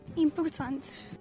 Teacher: If it is, it's usually a short vowel. As such, many vowels get reduced in speech, like o being pronounced as u in this case